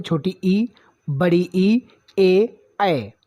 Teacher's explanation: दोस्तों, उच्चारण स्थान की दृष्टि से स्वरों के 3 भेद हैं। नंबर 1 अग्रस्वर, जिसमें जीभ का आगे का हिस्सा उठता है